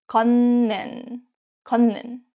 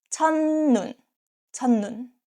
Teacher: When a syllable ends with a T sound and the next syllable starts with ni은 or mium, that T is pronounced as N sound. In other words, 디귿, 티읕, 시옷, 쌍시옷, 지읒, 치읒, 히읗 are pronounced as ni은 in this position, and of course the spelling don't change.